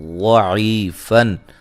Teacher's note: واد کو موٹا ادا کریں گے، اس کے مخرج سے نکالیں گے